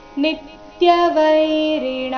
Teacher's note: ನೀ ಮೇಲೆ ಆಘಾತ ಗಮನಿಸಿ